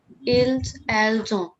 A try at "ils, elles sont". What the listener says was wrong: S would not be pronounced.